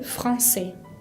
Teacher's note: Français tiene esa C con cedilla característica del francés que se pronuncia como una S, y la S final no la pronuncio.